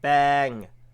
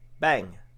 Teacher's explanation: il change aussi la longueur de la voyelle. Celle-ci passe du E long au E court